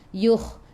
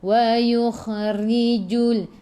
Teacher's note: Yukh masuk ke dalam kha. Kha ada sukun. Kena ada angin dan menggelegak.